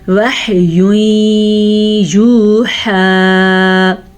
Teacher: تنوین کے بعد حروف یمون میں سے یا آیا ہے تو یہاں پہ ادغام بالغنہ کا قاعدہ ہوگا، یعنی یہاں پہ غنہ ہوگا